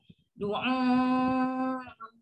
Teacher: kalau kita salah pergi ke hidung, dia tu yang bunyi bercakap macam sengau tu